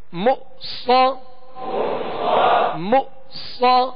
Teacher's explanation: صاد کو پر پڑھنا ہے اور صاد حروف مستعلیہ ہے، اس میں سیٹی کی آواز ہوگی